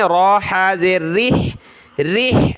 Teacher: ایلافہم، ایلافہم، رحلہ، را حا زیر ریح، را کے نیچے زیر ہے تو باریک پڑھنا ہے پتلا را کو، حا کو گلے سے نکالیں